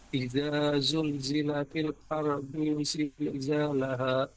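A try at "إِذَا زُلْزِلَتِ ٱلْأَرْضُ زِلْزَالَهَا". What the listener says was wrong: Pas huruf du-nya pendek. Ardu zilzalaha.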